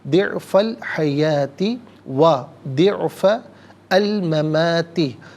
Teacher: ضعفا میں فا پر زبر ہے، اس سے الحیاتی کی لام ساکن کے ساتھ ملائیں گے، درمیان میں سے الف یعنی حمزہ کو حذف کیا جائے گا